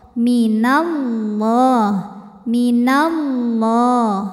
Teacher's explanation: tafkim sebab huruf sebelumnya berharakat di atas yaitu harakat fathah maka huruf lam jalalah ini dibunyikan dengan tebal dengan mengangkat pangkal lidah · huruf lam jalalah ini dibunyikan dengan tebal, dengan mengangkat pangkal lidah. Jadi bunyinya Allah, minallah, minallah. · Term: tafkhim